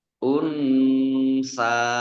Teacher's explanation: Nun sukun bertemu dengan huruf sa, bacaan ikhfa dibaca samar-samar